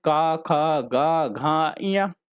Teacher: प्रथम व्यंजन के द्वितीय और चतुर्थ वर्णों को महाप्राण माना गया है।